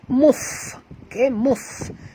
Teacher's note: huruf fa bila dia mati sahabat semua kita kena bunyikan hamasnya.